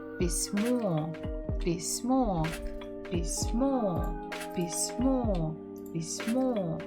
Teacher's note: The stress is on the final syllable.